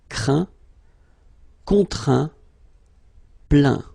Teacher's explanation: as usual, final T here is not pronounced, so you get craint, contraint, plaint.